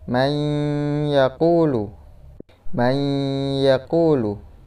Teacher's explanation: Nunnya tidak jelas, tapi terdapat sedikit dengung. Jadi itu namanya idgham bi gunnah, terdapat dengungnya.